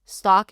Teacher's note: Stock is the open ah sound father.